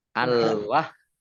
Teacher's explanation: Al wahhab alif lam komariah ditandai lamnya dibaca sukun. Kemudian haknya dibaca double, ada tasdidnya. Hak itu tekanannya dari dada ya.